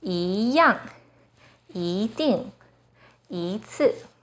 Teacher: When 一 is followed by a 4th tone, it changes to the 2nd tone